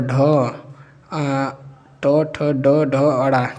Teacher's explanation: ट वर्ग जो होता है ट वर्ग क्या है मूर्धन्य है